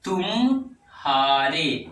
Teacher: दो शब्दों के बीच थोड़े से मौन को संगम कहते हैं।